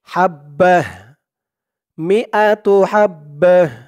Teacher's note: এই তা হা হয়েছে শুধু অকফ করার কারণে তো আমাদের এখানে উচ্চারণ করতে হবে হাব মিয়াতুহাব্বা [মিউজিক] [মিউজিক] কুল্লিস